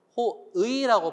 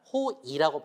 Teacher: 호의 베풀다라고 할 때도 호의라고 발음하지만 호이라고 발음해도 괜찮아요